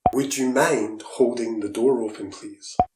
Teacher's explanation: 'wid' is a common pronunciation of 'would'.